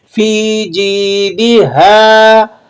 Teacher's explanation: الف مدہ ہے، 1 الف کے برابر اسے کھینچ لیں گے